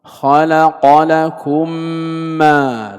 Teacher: فنحن ننطق الميمين ننطقها ميما واحدة مشددة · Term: إدغام مثلين صغير